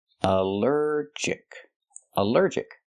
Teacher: Allergic is three syllables. Allergic. The stress is on the second syllable.